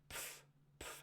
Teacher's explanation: An affricate involves a stop that then releases into a fricative.